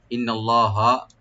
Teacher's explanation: নুন মুসাদ্দাদ এখানে ওয়াজিব গুণা করবেন, একালি পরিমাণ টানবেন না।